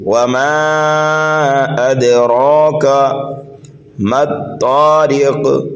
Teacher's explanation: میم اور طا کے بیچ میں حروف شمسی کا قاعدہ پایا جا رہا ہے، طا کو پر پڑھنا ہے، را کو باریک پڑھنا ہے